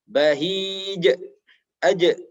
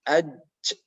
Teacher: Karena makhrajnya tidak keluar dari ujung lidah maupun ujung bibir, melainkan di tengah. Kemudian qalqalah, suara tambahan memantul, khususnya ketika bertanda sukun atau berada di akhir kata atau kalimah. Bahij, aj, bukan aj atau aj, enggak ada pantulannya.